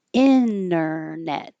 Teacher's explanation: the t can drop internet because it's not in the stress syllable and it's after an n